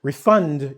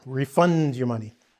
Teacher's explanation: when it comes to the verb, we tend to emphasize the latter part of the - the last part and the vowels in the last part of the word.